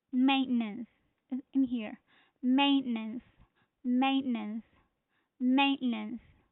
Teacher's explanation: the stress is on the first syllable which is main